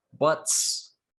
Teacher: right and the s is voiceless because k is voiceless buts because t is voiceless we have the s voiceless